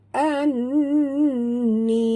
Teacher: dekat nun ada tasydid, tekan tekan pula dengung dengung wajibal gunah. Anni, ni mak tabi'i du harakat.